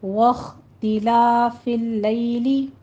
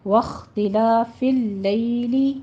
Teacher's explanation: لیل میں یا لین ادا کریں گے، یہاں پہ آپ نے 1 سے 2 حرکتوں کے درمیان پڑھنا ہے، یا لین کو زیادہ لمبا نہیں کھینچنا۔